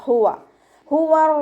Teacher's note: അക്സൽ ഹൽക്കാണ് മഖ്റജ്, തൊണ്ടയുടെ അവസാന ഭാഗം, തൊണ്ടക്കുഴി എന്നൊക്കെ നമ്മൾ പറയാറില്ലേ, ആ ഭാഗത്തു നിന്നാണ് ഹ പുറപ്പെടുന്നത്. അതിൻ്റെ സൗണ്ടിനെ ഹംസയുടെ സൗണ്ടായി പോവാൻ ചാൻസ് ഉള്ള ഒരക്ഷരം കൂടിയാണ്, അപ്പോൾ ശ്രദ്ധിക്കുക.